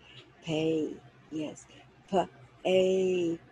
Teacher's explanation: a P is like a little puff of air